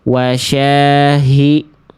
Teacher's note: H yang pertama udah bagus nafas dan suaranya jelas. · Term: H besar